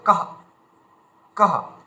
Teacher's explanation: এই বিসর্জনীয় যে উচ্চারণ সেটা হচ্ছে অর্ধেক হ।